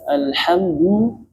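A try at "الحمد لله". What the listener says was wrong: Ini jangan hilangkan bunyi le-nya.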